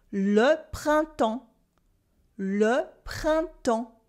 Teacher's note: We also have le printemps for springtime, le printemps, with a silent P, a silent S, and you don't hear any N or M sound either